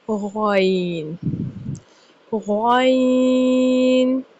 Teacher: غین حروف حلقیہ میں سے ہے۔ غین اور خا کا مخرج ایک جیسا ہے، یعنی حلق کے اوپر والے حصہ سے غین کی ادائیگی کی جاتی ہے